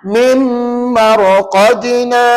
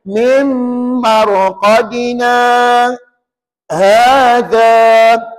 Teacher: Bila sebut mimar qadina tadi, kita tahan nafas selama 2 second. 2 harakat. Maka itu namanya saktah.